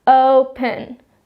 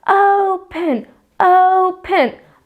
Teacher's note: oh is actually my stress syllable not the pen